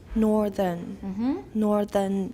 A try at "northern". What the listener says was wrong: Make the second R more clearer. Not northern. Northern.